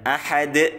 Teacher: waqaf nah ini namanya Qalqalah kita pantulkan Ahad